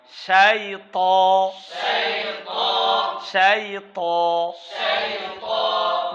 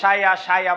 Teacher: ত মোটা হবে ঠোঁটগুলো হবে না